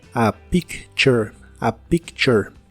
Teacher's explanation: La T de la palabra picture suena como el sonido que hace la CH.